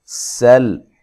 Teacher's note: سین کو باریک سیٹی سے ادا کرنا ہے، ٹھیک ہے، لام کو ہلانا نہیں ہے، حرف قلقلہ کے سوا کسی بھی حرف کو ہلایا نہیں جاتا ہے۔